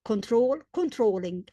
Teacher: The last syllable is stressed. Therefore, we double the L control controlling LL.